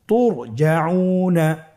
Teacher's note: র সাকিনের পূর্বে কি এসেছে, পেশ। র সাকিনের পূর্বে পেশ থাকলে অবশ্যই রকে পোর করে পড়তে হবে, মোটা করে পড়তে হবে।